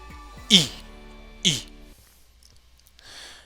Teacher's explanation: Parmi les voyelles fermées, à timbre clair, on distingue le I.